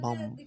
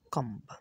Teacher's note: M ও বি থাকলে বি উচ্চারণ হয় না।